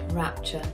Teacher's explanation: things like rapture has that glottal catch